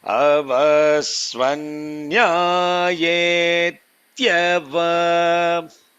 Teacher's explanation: Tya should be swaritam.